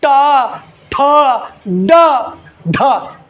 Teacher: मूर्धा होगा तो जीवा टर्न मारेगा, घूमेगा।